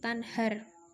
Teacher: Masih ayat ke-9 itu hukum bacaannya idhar karena huruf nun sukun bertemu dengan huruf H tanhar dibaca terperinci tidak dengung sama sekali